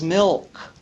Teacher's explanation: You need to pronounce the L in that LK cluster as milk, not mick.